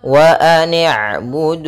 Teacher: Ainnya memiliki sifat bainiah yaitu ee antara bacaan syiddah dan bacaan rakhawah. Syiddah itu tertahannya suara sedangkan rakhawah mengalirnya suara.